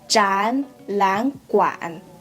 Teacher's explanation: So you can see that when I'm going to try them combine together, so I will try to change the first hanzi, the first tone, into the second tone, and then the middle one, I will try to make the falling tone slightly and not very focused, and then try to finish the whole phrase together.